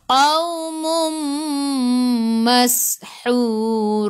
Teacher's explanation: Masuk ke dalam sin ada sukun. Bunyikan sifat huruf sin safir. Mashu hahihu ha pedas, hu 2 harakat, ada waw mad asli.